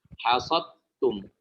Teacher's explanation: Nah, Imam menjelaskan di bait ini tentang dal bertemu dengan ta, dal sukun bertemu dengan ta. Maka ini hukumnya adalah idgham kamil, dileburkan secara sempurna. Jadi seakan-akan kita mengucapkan huruf ta itu bertasydid.